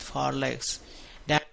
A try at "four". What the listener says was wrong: With four legs. 4, make that longer.